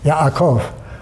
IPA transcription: yaʔak